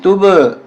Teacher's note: यहाँ कलकला होगा, तुब आवाज टकरा कर आएगी